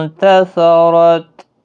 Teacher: نون ساکن کے بعد حروف اخفاء کا تا اخفاء حقیقی ہوگا، اور پر پڑھا جائے گا زبر کی وجہ سے، اور وقف کی صورت میں تا ساکن ہی پڑھا جائے گا۔